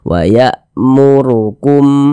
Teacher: juga dibaca tebal juga dibaca tafkhim nah tebalkan huruf rnya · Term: tabkhim